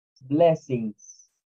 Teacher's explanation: blessings lleva un sonido de z al final